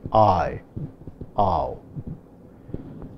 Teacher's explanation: the first vowel is more prominent than the second, and thus the braver is put on the second vowel, like I, ow. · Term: diphthong